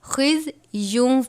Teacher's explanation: لہم فی الدنیا خزی، تنوین کے بعد واو مشدد ہے حروف یرملون میں سے، تنوین کو ہم واو سے ملا کر پڑھیں گے اور غنہ کریں گے. خز یون نہیں پڑھنا بلکہ خز یوں پڑھیں گے، واو کی آواز نکلنی چاہیے.